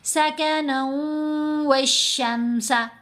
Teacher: غنہ کی مقدار تو 2 حرکات کی مقدار ہے نا، آواز ناک میں جانی ہے